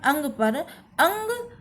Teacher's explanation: नाक से आपको आवाज आ रही है। कहीं ना कहीं आपकी नाक बजती है। नाक से ध्वनि आती है। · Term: अनुस्वार